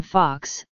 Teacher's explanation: in most dialects of British English it is either an open mid-back rounded vowel or an open back rounded vowel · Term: short o